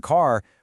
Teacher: A big one is the R sound. Americans will say the R in car, but a British speaker often won't.